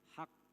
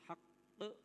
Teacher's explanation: Fzalikumullahu rabbukumul haq qalqalah. Haq di samping qalqalah dia ada tasydid. Jadi ditekan dulu kemudian dihentakkan atau dipantulkan. Haq. Hak jangan hak jangan dibaca hak tapi haqq ada qya ya.